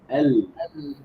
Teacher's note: bainiah pada huruf lam adalah dengan mengalirnya sebahagian suara ke tepi kanan dan kiri ketika mengucapkannya disebabkan terhalang oleh hujung lidah yang menyentuh langit-langit